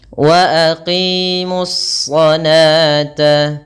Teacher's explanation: itu adalah pengucapan 'sh' yang kental. Dengan lidah terangkat.